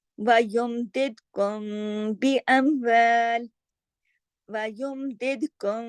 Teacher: جیسے مثال کے طور پر تم بھی وَيُمْدِدْكُمْ بِأَمْوَالٍ، वयुमदिदकुम, ऐसे देखें, बी एम तो मीम साकिन के बाद यहाँ बा आया, तो कुछ इजहार भी हुआ और कुछ दरमियानी सी कैफियत, मिलाया भी मिलाया भी और कुछ इजहार भी किया, दरमियानी सी कैफियत है, इसको कहते हैं इख्फाई शफवी।